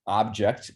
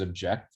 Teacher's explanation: object the first syllable is stressed and object the second syllable is stressed